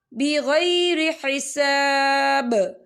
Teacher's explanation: وقف کی صورت میں با جو ہے ساکن ہو جائے گا اور اس پر قلقلہ ہوگا